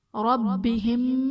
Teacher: ربہم با حرف قلقلہ مشدد ہے تو یہاں پر قلقلہ خوب جماؤ کے ساتھ ادا کریں گے۔